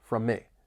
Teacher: We also have overlapping M sounds from me. It almost sounds like one word